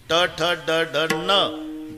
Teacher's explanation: वरच्या टाळूला जेभेचा स्पर्श आहे